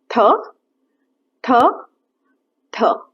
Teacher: जब आप थ बोलेंगे तो आपकी जो टंग है वो टीथ को टच करेगी और एस्पिरेशन के साथ, मतलब हवा के साथ बोलेगी थ थ थ। जब आप थ बोलेंगे हाथ पे फील करिए, ब्रेथ आएगी, एस्पिरेट करेंगे।